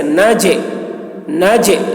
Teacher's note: جیم میں قلقلہ، یعنی جیم کی آواز اپنے مخرج سے ٹکرائے گی، جیسے ناجے، ناجے، جیم میں دیکھیے جیم کی آواز ڈبل نکل رہی ہے، تو اسی کو قلقلہ کہتے ہیں۔